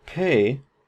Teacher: the pay, or the P in pay, is aspirated. It has this little H up here that we transcribe it with because we have a puff of air.